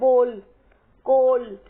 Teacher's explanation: इसमें ओ और औ के बीच की एक ध्वनि है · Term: आगत ध्वनि